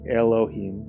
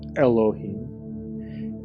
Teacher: And Aleph is the sound before all sounds, so it's actually a glottal stop.